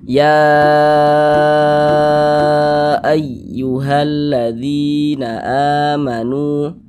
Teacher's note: maka dari segi hukum dia adalah mad jaiz munfasil. Nah, panjangnya 4 sampai dengan 5 harokat. 4 harokat kira-kira sepanjang 4 ketukan.